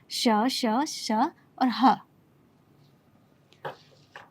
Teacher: ऊष्म नाम इसलिए पड़ा है क्योंकि हवा उसमें थोड़ी गर्म हवा बाहर निकलती है, तो इसलिए इन्हें हम ऊष्म व्यंजन कहते हैं, जिसमें यह 4 आते हैं, श, श, श और ह।